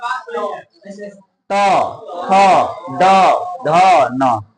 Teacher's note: ये जीभ टच करेगा दांत को